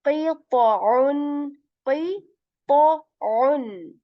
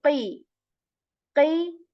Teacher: The first two letters are heavy. The last one is a letter of throat from the middle portion.